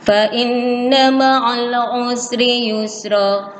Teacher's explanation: Fa inna, harus berdengung. Dua ketukan.